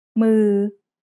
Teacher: This is a mid-tone word because it's a low-class initial consonant and has a live syllable ending